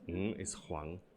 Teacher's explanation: my surname Huang does not even have a proper vowel